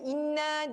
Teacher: Inna, dengung yang paling panjang ya.